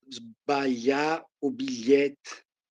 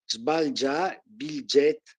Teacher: il passaggio del suono GL passa a LG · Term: scambio delle consonanti